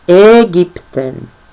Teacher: A umlauts tiek izrunāts kā E, un tas ir platais EE